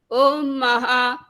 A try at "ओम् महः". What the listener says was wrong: जब महा बोलना है तो वो गलत होता है। ह के बाद विसर्ग है ना, हर एक के बाद विसर्ग लगी हुई है।